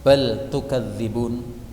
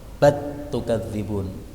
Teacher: Kemudian bal tukadzibun, ini boleh dibaca dengan idgham, bat tukadzibun, jadi lamnya hilang menjadi ta